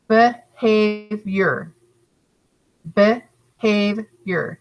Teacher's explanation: the stress is on the middle syllable